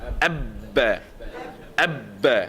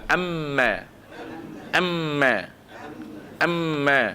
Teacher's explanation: pressure dekat ba dia lebih kuat daripada pressure dekat mim